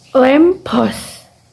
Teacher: double P are pronounced with a prolonged complete closure and with pollution occurring only in the second sound, as in lamppost.